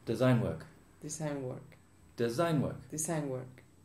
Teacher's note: design work normally the stress is on the first word